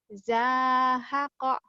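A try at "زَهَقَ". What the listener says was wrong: Zahaqa. Zai kurang rapuh, kurang.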